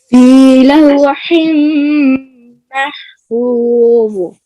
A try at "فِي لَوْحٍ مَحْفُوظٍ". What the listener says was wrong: آخر ضا میں قلقلہ نہیں کرنا. محفوظ نہیں کرنا. محفوظ فی لوح محفوظ.